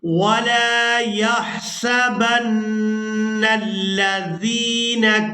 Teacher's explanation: यहाँ नून मुशद्दद पर गुन्ना करेंगे।